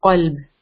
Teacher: It's a heavy letter and it comes from the back of the tongue. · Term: qaf